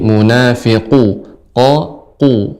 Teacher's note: Untuk pengucapan huruf qaf Ibu, ya qaf ini bagian yang lunak. Jadi pangkal lidah paling belakang menempel atau melekat pada daging yang lunak bagian atas